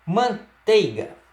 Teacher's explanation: Outra combinação possível de ditongo decrescente seria o encontro da vogal E com a semivogal I.